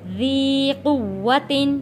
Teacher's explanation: واو کے اوپر تشدید ہے، سختی کے ساتھ تھوڑا رک کر واو کو ادا کریں گے